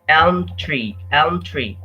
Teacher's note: they form consonant clusters across the words between the word elm and the word tree